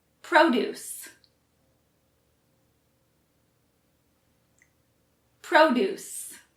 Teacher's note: produce, which emphasizes the first syllable, pro, and means fruits and vegetables.